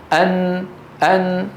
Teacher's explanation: ما فيها شده الصوت يمر عن طريق الانف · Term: النون